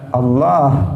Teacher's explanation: Allah itu pakai lam, tetapi tafkhim, dibaca tebal.